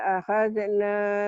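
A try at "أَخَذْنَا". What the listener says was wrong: Akhad Ahad, Huruf itu ada yang bunyi A, ada yang bunyi O. Ini kho, bukan ahad, tapi akhad ya.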